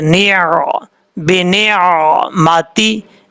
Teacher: اس لفظ میں نون کے بعد عین ہے، عین کو نارمل طریقے سے پڑھنا ہے، سختی سے یا جھٹکے سے نہیں پڑھنا